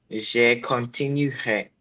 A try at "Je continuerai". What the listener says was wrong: Not J, not J.